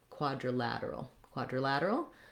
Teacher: That has the the ah vowel, quadri, and then this letter I is either going to be a schwa or an I sound, just like the I in uni. It's going to be a reduced vowel, so very short